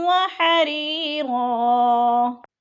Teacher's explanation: وحریرا، حری پہ یا مدہ ہے، یا ساکن سے پہلے را کے نیچے زیر ہے تو یا مدہ۔ اور رن، دو زبر تنوین، وقف کی صورت میں ایک زبر میں بدل کر پڑھیں گے